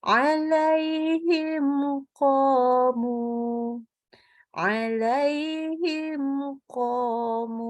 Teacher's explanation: Nah, ini hukumnya idhar ya, idhar syafawi, idhar. Jadi mimnya jelas aja, kita tidak tambahkan dengung lagi, hanya memberikan sifat tawasud pada mim, sudah.